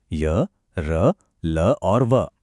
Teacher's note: इनकी आवाज न तो पूरी तरह से व्यंजन जैसी है और न ही पूरी तरह से स्वर जैसी। ये कहीं बीच में है। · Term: अर्ध स्वर